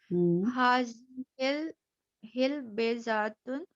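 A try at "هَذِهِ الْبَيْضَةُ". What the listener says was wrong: हाज़िहिल बैदतु कबीरतुन, अलिफ लाम लगेगा, बैदा पे फिर एक पेश आ जाएगा। हाज़िहिल बैदतु, इसको पढ़ें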